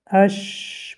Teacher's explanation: ببینید حرف شین یعنی که صدا بند نمی شود، صدا به ملائمی می براید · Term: رخاوه